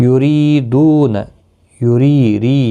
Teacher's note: یریدون، یری ری یا مدہ ہے، دو واو مدہ ہے، ایک ایک الف کی مقدار کے برابر کھینچ کر پڑھیں گے اور زیر کی وجہ سے باریک پڑا جائے گا۔